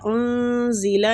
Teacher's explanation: انزیلا نون کا اخفا کریں گے